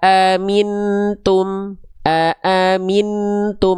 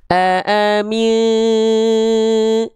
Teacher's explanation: nunnya enggak nempel ke langit-langit. Dia ngawang, dia samarkan saja sambil bersiap-siap melafalkan huruf berikutnya disertai dengung.